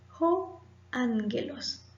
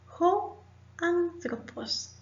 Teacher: Estoy leyendo ho y no o porque nuestra Omicron tiene un espíritu áspero, mientras que nuestra alfa tiene un espíritu suave.